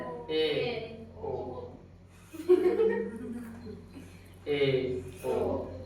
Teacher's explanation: आधा मुंह बंद रहेगा, बोलते समय आधा मुंह बंद रहेगा। जैसे ए ओ मुंह बंद रहेगा तब बोल लीजिएगा। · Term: अर्ध संवृत